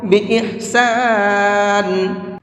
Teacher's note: میں نے یہاں پر جب وقف کیا ہے تو نون کو ساکن کر کے پڑھا ہے، اس لیے کہ جب بھی کبھی دو زیر پر وقف کرتے ہیں، آیت کرتے ہیں، تو اس دو زیر کو ختم کر دیتے ہیں، اور جس لفظ کے اوپر وہ دو زیر ہیں اس کے اوپر جزم لگا دیتے ہیں۔